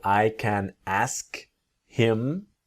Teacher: native speakers don't always pronounce the letter H when we speak quickly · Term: disappearing H